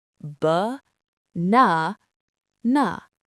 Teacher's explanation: The middle is loud. The sides are ghosts.